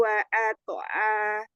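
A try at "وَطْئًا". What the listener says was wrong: Enggak pakai wakat. Wako langsung wato'a bukan wa'ato'a.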